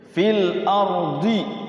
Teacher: Fil ardi ada hukum tuh al qamariyah, karena rohnya karena alnya berbunyi lam sukun ya